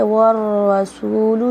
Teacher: یہاں پہ دیکھیے والرسول شد ہے، را پہ تو را موٹا پڑا جا رہا ہے